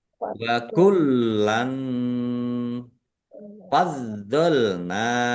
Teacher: lamnya ada tasdidnya dibaca dobel ditekan biar tampak ya biar tampak dobelnya